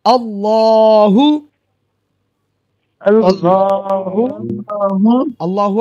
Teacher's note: আল্লাহ লাম পুর হবে, মোটা হবে